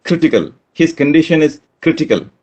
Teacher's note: In critical, anti-penultimate happens to be the first syllable. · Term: anti-penultimate syllable